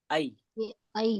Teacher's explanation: تو زبان کا بیچ کا حصہ اوپر کے تالو سے ٹچ ہوتا ہے، تو یہی اس کا مخرج ہے. زبان کے بیچ اور اس کے مقابل اوپر کے تالو سے یا ادا ہوتا ہے